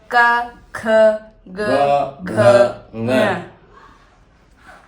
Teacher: कै वर्ग, कै कंठ से बोला जाता है। कंठ मतलब गले से, हवा आती है बाहर निकल जाती है।